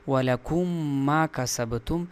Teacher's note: دونوں میم کو غنہ کرتے ہوئے یعنی اس میم کو دوسرے میم میں گھسا کر اس دوسری میم کے اوپر شد لاتے ہوئے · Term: ادغام